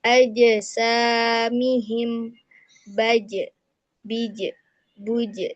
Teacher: huruf jim ini adalah huruf qalqalah yang memantul. Jadi harus ada pantulan.